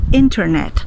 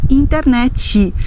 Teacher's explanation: Nós não conseguimos dizer isso em português, nós vamos dizer internet, porque nós não podemos terminar uma palavra com uma consoante dessa forma tão brusca. Nós precisamos de um som de uma letra I para que soe mais simpático, mais agradável ao nosso ouvido brasileiro.